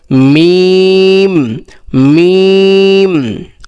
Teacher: এই মিমটা হলো দুই ঠোঁটের শুকনা অংশ ওইখান থেকে উচ্চারণ হবে। যে দুইটা ঠোঁট আছে, ওই দুইটা ঠোঁটের ওই শুকনা অংশ আছে, যেখানে একটু জিহ্বা ওই ঠোঁটের একটু শুকনো অংশ, ওইখান থেকে উচ্চারণ হবে।